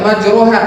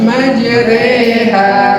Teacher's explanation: ro yang dimiringkan ke kasroh. Kan harusnya ro ya majroha, tapi majreha. Nah itu namanya imalah.